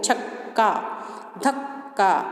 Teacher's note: जब एक व्यंजन ध्वनि अपने जैसे ही अन्य ध्वनि से संयुक्त होती है तो उसे द्वित्व व्यंजन कहा जाता है